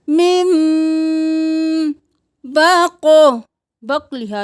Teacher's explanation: میم غنہ کریں کیونکہ میم کے بعد با ہے